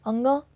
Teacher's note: अंग का उच्चारण कंठ और नासिका से होता है।